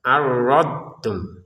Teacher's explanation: huruf dot itu dari pangkal ke ujung lidah, baik lidah bagian sisi bagian kanan atau bagian kiri menyentuh ke gigi atas